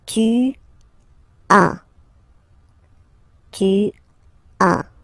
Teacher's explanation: as usual in French, final S is not pronounced